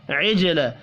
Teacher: عجل جیم ساکن ہے، قلقلہ کریں گے